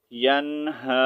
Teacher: نون ساکن کے بعد حروف حلقی میں سے ہا جو ہے حروف حلقی میں سے ہے، تو اب یہاں پر ہم نے کیا کرنا ہے، ظاہر کر کے پڑھنا ہے